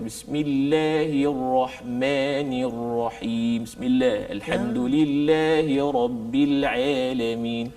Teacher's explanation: dia baca dengan condong. Semua sebutan ada condong. Macam imalah. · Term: ta'wijil fak